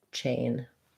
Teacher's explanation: And then for chain, again, the ch sound, the A diphthong. So make sure your A is nice and long. It moves from that tense A and it relaxes as it continues. Close the jaw a little bit.